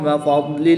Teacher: ضاد ساکن ہے اور ضاد حروف مستعلیہ میں سے ہے، تو یاد رہے کہ ضاد کی ادائیگی میں دال کی آواز نہ آئے، کیونکہ دال حروف قلقلہ میں سے ہوتا ہے اور اس پہ قلقلہ ہوگا جب وہ دال ساکن ہوگا، مگر ضاد ساکن پر قلقلہ نہیں کریں گے، بلکہ اس کو پر یعنی موٹا پڑھیں گے، اور ضاد ساکن کی ادائیگی کا خاص خیال کرتے ہوئے اس کو پڑھیں گے۔